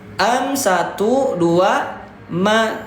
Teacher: Jadi kesimpulannya daripada gunah itu adalah hurufnya gunah itu mempunyai dua yaitu mim dan nun tapi dengan syarat harus bertasdid. dibacanya dibaca dua harakat didengungkan. Dengung itu adalah suara kita dimasukkan ke dalam rongga hidung.